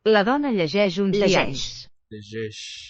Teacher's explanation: Llegeix, and it's voiced, probably because it's between two vowels here.